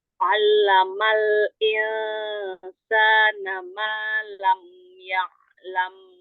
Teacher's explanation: Buka lagi tenggorokannya pada huruf ain. Buka lagi. Huruf ain itu ngambil makhraj pertamanya aja.